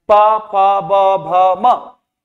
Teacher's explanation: आप देखेंगे बिना दोनों के होंठ स्पर्श किए हुए, चिपके हुए, तब तक आप इनको उच्चारित नहीं कर सकते, तो इन्हें हम क्या कहते हैं, ओष्ठ व्यंजन कहते हैं।